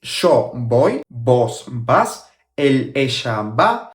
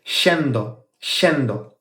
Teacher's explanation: we pronounce the double L as sh sound and the Y as sh sound too.